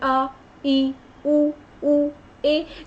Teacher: जो बिना किसी हेल्प के बोलते, जैसे अ, ई, उ, ए। जब हम इनको बोलते हैं तो हमारे मुंह से जो हवा है वो आराम से निकलती है, रुकती नहीं है। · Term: स्वर